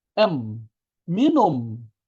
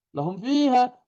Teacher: Berikutnya huruf mim yang mati. Maka kedua bibir rapat.